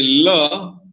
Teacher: the tongue tip is raised while the rest of the tongue remains down so air can escape over the sides of the tongue